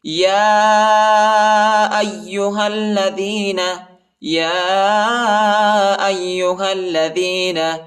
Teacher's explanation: یا ایہا الذین، یا پر کڑا زبر اور چھوٹا مد آیا ہے، اس کو تقریباً 2-3 سیکنڈ تک کھینچیں گے، اور یا کے بعد جو حمزہ ہے اس کو یا کے ساتھ ملائیں گے، ٹھیک ہے، اور یا کو شدت کے ساتھ، سختی کے ساتھ پڑھیں گے، اور ہا کو لام کے ساتھ ملائیں گے، ٹھیک ہے۔